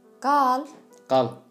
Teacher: Evde kal, Türkmence öyde qal oluyor. Yani qal uzun söyleniyor.